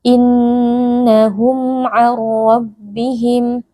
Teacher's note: Sini ada mim sukun berjumpa dengan huruf ain, hukumnya adalah izhar syafawi. Mim sukun dibaca dengan jelas tanpa berdengung.